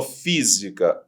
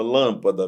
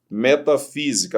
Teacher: A sílaba tônica está na antepenúltima sílaba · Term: proparoxítona